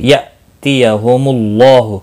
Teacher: نون ساکن کے بعد حرف یرملون کا یا آئے ادغام با گنہ ہوگا، حمزہ ساکن جھٹکے کے ساتھ پڑھیں گے، یأتیہم اللہ، اللہ کلام پیش کی وجہ سے پر پڑھا جائے گا